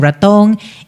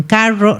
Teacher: para nosotros es una rótica vibrante